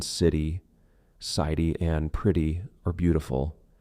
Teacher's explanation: the flap T or quick D common in American English, where T between vowel sounds or diphthongs softens